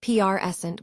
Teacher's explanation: As a noun prant with stress on the first syllable, it refers to a gift or the current moment.